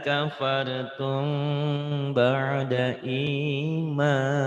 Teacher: Ikhfa ya, karena ada samar ada ke hidung, kayak orang yang bindeng ya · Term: ikhfa syafawi